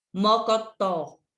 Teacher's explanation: a última sílaba que é a mais forte é a que a gente fala com mais forte com mais intensidade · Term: sílaba tônica